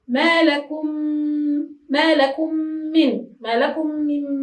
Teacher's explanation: ما لكم، الميم ساكنة، من، الميم متحركة مكسورة. إذا تضغم الميم الأولى في الميم الثانية بحيث يصبحان حرفا واحدا مشددا، لا نقول هنا من جنس الثاني لأنهما متماثلان. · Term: إدغام المتماثلين